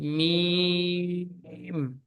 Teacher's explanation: মিম কেও 3 আলিফ পরিমাণে টান দিয়ে পড়তে হবে, কারণ নিচে দেখেন 3 লেখা রয়েছে।